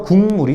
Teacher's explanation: 위치는 그대로 유지하고 기억은 뭘로? 비음으로, 이응으로 바뀐다라고 알면 됩니다. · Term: 비음화